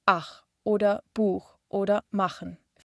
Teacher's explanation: Dieser Laut kommt aus dem hinteren Teil des Rachens. Er kommt nach den Vokalen A, O, U und Au. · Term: Ach-Laut